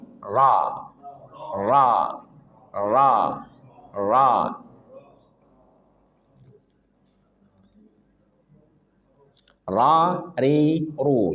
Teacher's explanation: getarannya tidak boleh lebih dari sekali. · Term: takrir, getaran